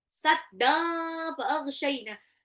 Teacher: tanwin ketemu fa itu ikhfa lagi, tahan